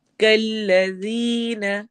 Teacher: ذال کو نرمی سے پڑھنا ہے اور یا مدہ کرنا ہے